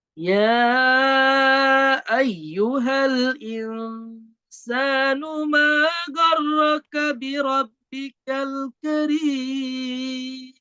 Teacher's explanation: Mad tabi'i di akhir kalimat dan mematikan huruf yang terakhir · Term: Mad arid disukun